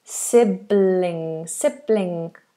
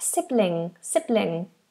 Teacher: I think when an L is followed by an ing then it's generally light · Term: lightel